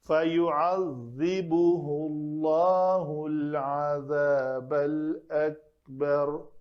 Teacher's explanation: ذال کا مخرج نوک لسان دونوں دانتوں کے درمیان آئے اور اس میں زیادہ قوت شدت نہیں پیدا کرنی، جیسے نہیں، فَيُعَذِّبُهُ اللَّهُ الْعَذَابَ الْأَكْبَرُ۔